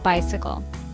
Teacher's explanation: 3 syllables. First syllable is stressed.